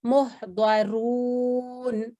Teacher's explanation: جی جی اس کا پلیز. یہ را ہے, را کے اوپر دم ہے تو اس کو ہم موٹا پڑھیں گے اور اس کو ہم لمبا بھی پڑھیں گے